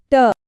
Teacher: ये hard palate के ठीक पीछे का हिस्सा है। अब ट वर्ग की ध्वनियों के लिए जबान को थोड़ा पीछे की ओर मोड़ना पड़ता है और फिर मूर्धा से टकराना पड़ता है। जबान के इसी मुड़ने की वजह से इन्हें रेट्रोफ्लेक्स भी कहते हैं।